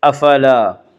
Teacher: لِحُبِّ الْخَيْرِ لَشَدِيدٌ آگے آیت ہے وقف کریں گے، لَشَدِيد وَإِنَّهُ لِحُبِّ الْخَيْرِ لَشَدِيدٌ أَفَلَا يَعْلَمُ إِذَا بُعْثِرَ مَا فِي الْقُبُورِ افلا الف مدہ، الف ہمیشہ مدہ ہوتا ہے، الف سے پہلے ہمیشہ زبر ہوتا ہے، الف مدہ کو 1 الف کے برابر کھینچ کر پڑھیں گے